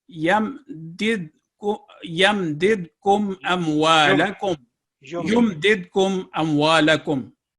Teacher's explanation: इसमें कहीं पे भी नेज़ल साउंड नहीं आई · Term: इजहार शफवी